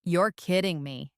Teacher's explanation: You would say it with a low, disbelieving tone.